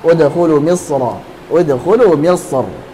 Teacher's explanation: Udkhulu Misra dengan tebal karena asalnya adalah ra-nya fathah.